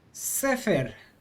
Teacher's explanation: we're going to accent the syllable before the last syllable